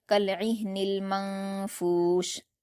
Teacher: ایک الف کے برابر غنہ کیا جائے گا اخفا کے ساتھ